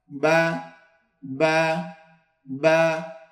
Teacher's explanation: বা 2 ঠোঁটের ভিজা অংশ হইতে, বা 2 ঠোঁটের ভিজা অংশ হইতে, অর্থাৎ এই যে আমাদের ভিজা অংশটা, ভিজা অংশ থেকে বা উচ্চারণ করতে হয়।